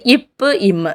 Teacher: மேல் இதழும் கீழ் இதழும் பொருந்துவதனால் பிறக்கின்றது